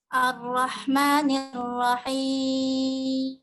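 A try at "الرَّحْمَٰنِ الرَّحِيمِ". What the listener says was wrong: Ro-nya kurang tebal sedikit. Ar-Rahmanir-Rahim. Ar-Rahmanir-Rahim. Huruf-huruf isti'la, huruf-huruf tafkhim sedikit kurang ditebalkan. Seperti huruf ta tadi dan huruf ra, ya. Huruf ra sudah bagus, tinggal ditebalkan itu lebih indah.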